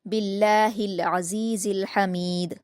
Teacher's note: लफ्ज़ अल्लाह को बारीक पढ़ेंगे क्योंकि बा पर ज़ेर है · लास्ट में दाल पर कलकला